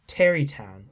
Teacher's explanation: Tarrytown begins a line of stress, trochaic